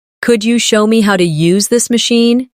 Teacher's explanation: Could you becomes could ya in casual rhythm.